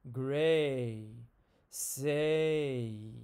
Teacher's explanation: when I say the vowel A, it starts in the middle and it moves up to the front